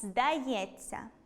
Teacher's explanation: буквосполучення “-ться” вимовляється як [ц′:а], це уподібнення за місцем і способом творення. Тому вимовляємо [здайе́ц′:а].